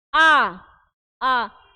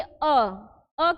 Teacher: जो आ है आ का बोलने का जो समय है वोह क्या है अ से अपेक्षाकृत थोड़ा अधिक है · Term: दीर्घ स्वर